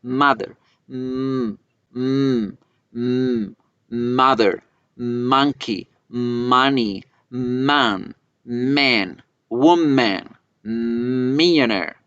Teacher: La M es una consonante nasal. Quiere decir que yo cierro los labios y como no hay por dónde salir el aire se va por la nariz. Entonces debe vibrar.